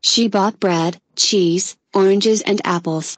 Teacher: Thì câu liệt kê thì tất cả nó đều lên hết, cái từ cuối cùng thì nó sẽ xuống. Từ cuối cùng là cái này ha, apples xuống ha.